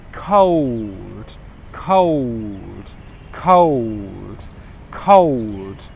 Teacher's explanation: I'm making the k sound, k, and then I'm going straight into the schwa sound, ko, ko, ko. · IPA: /kəʊld/